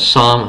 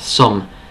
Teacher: It's actually not the ah sound. It's actually the short u sound. So instead of sam, like some like sums in math, sum.